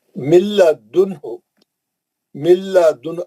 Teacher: नून गायब हो गया, नून इदगाम कर लिया, सख्ती से मिल गया, सीधा लाम में जाएंगे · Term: इदगाम बिला गुन्ना